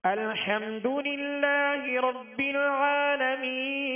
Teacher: جو لام کا سکون ہے کامل پڑھنا ہے، آواز ہلے نہیں، اس میں جنبش پیدا نہ ہو، حرکت پیدا نہ ہو۔